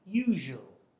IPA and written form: ju:ʒu:əl (usual)